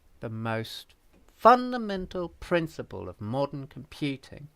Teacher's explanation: But the whole thing has a descending intonation, doesn't it? The most fundamental principle of modern computing goes down like that.